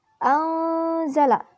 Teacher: Cara membacanya samar dengan dengung dan ditahan selama 3 harokat. Pada waktu mengucapkan huruf nun mati, sikap lidah dan bibir dipersiapkan menempati huruf zai. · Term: ikhfa